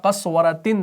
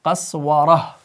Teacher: جب آپ اس پر وقف کریں گے نا تو آپ اس گول تا کو بدلیں گے ہائے ساکنہ سے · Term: وقف بالابدال